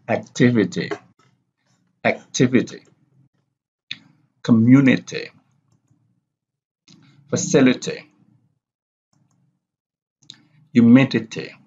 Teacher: they have the primary stress on the third syllable from the last